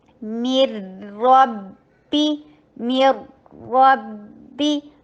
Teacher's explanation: میم کے نیچے کسرہ کر کے اور پھر را کے اوپر ادغام بلا غنہ